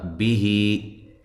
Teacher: ہا یہ جو ہی ہے یہ یا مدہ کے قائم مقام ہے اور اس کو ایک الف کے برابر لمبا کرنا ہے